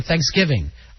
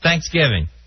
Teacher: i put the emphasis on give you put it on thanks